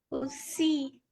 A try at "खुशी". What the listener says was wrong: सी नहीं, श, खुशी। स नहीं, श खुशी नहीं, हाँ बोलिए खुशी, ऐसे बोलिए खुशी। हाँ, बिहार में ऐसे स बोलते हैं।